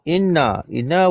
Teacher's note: wajib didengungkan kadar dua harakat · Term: wajibul ghunah